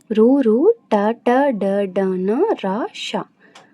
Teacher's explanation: మూర్ధన్యములు అంటే నాలుక యొక్క కొన భాగం నుండి పుట్టినవి